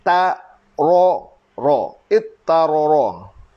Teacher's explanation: Ta dan to daripada makhraj yang sama. Cuma to tu huruf tebal, ta huruf nipis. Ta tu ditukar kepada to.